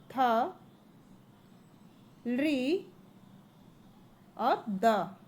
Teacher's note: ये हमारे दंत से निकलते हैं